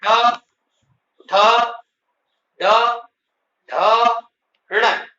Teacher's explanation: इनका उच्चारण मूर्धा से होता है। इसलिए इनको मूर्धन्य वर्ण कहते हैं।